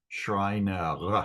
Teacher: The R is pronounced in like the back of the throat.